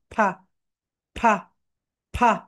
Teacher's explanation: তোমাদের উপরের দাঁত, উপরের যে দাঁত রয়েছে, উপরের দাঁত নিচের ঠোঁটের সঙ্গে টাচ করবে, নিচের ঠোঁটের সঙ্গে টাচ করবে।